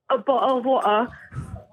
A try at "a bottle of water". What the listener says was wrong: Yeah, they don't pronounce R's at all. Or T's.